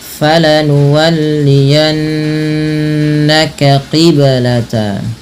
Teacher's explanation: Kemudian pada lafal falanuwalliyannaka qiblata, pada lafal yanna, tahan bunyi suara nunnya pada lafal falanuwalliyanna karena ia termasuk bacaan gunnah dengan menahan bunyi suara n-nya atau bunyi suara nunnya sepanjang 2 harokat. Nah, kemudian ini ada huruf yang berdekatan antara huruf kaf dan huruf qaf, maka harus bunyinya dibedakan ya, kaqi ya, bukan kaki, tapi falanuwalliyannaka qibla.